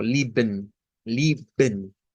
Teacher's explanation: La última pronunciación nos está diciendo que el Shva, ¿verdad? Se puede omitir, vea que se omite, porque si no se omite, pues es el mismo que está acá.